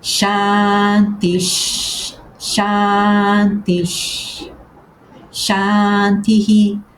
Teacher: a alteração é o H com o pontinho, que, como já vimos, corresponde ao Hi, aspirado, é substituído por um som Sh. Por isso eu leio Shantish, Shantish, Shantihi, que, repara, permite-me ler tudo de forma fluida. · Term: sandhi